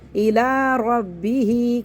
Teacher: کھڑے زبر کو ایک الف برابر کھینچیں گے, یا کو نہیں پڑھیں گے. رو کو موڑا پڑھیں گے, رو کے اوپر زبر ہے, با کو 2 دفعہ پڑھیں گے.